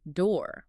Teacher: So instead of saying do, we just say door, one sound, flat. We're flattening the diphthong into a monophthong.